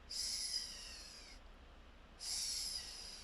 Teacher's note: there is only air passing through, so it is a voiceless sound